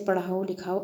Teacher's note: इसमें द्वितीय अक्षर पर बल देने में प्रेरणार्थक